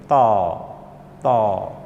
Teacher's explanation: زبان کی نوک ثناء الیہ کی جڑ سے جب لگتی ہے تو تا ادا ہوتا ہے